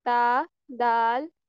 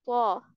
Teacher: ता और दाल को हम बारीक पढ़ते हैं। बाकी रह गया तो, इसको हम थोड़ा हैवी करते हैं।